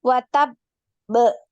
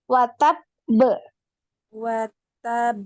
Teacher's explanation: dinaikkan kemudian ditahan dulu suaranya ukti baru dipantul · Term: qalqalah